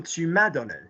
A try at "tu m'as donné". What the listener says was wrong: Don't stress an auxiliary, though.